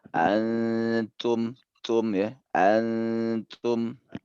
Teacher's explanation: Ada kresek-kreseknya gitu ya. Suara hamas namanya itu.